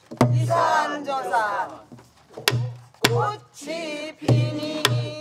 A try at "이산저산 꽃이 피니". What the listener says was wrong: 그것이 아니고 이산저산 꽃이 피니 일곱 번째 박에서 꽃이 피니가 나와주셔야 돼요.